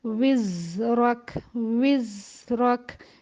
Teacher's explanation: زا جو ہے وہ رخاوہ کی صفت رکھتا ہے، تو اس آواز کو ہم زیادہ چلائیں گے